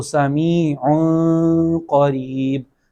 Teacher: نہ مکمل طور پہ تنوین کی جو آواز نون والی ہوتی ہے وہ ظاہر ہوگی، اور نہ ایسا ہوگا کہ بالکل ہی تنوین کی آواز نہیں آئے گی، بلکہ نون غنہ کے انداز میں اسے پڑھا جائے گا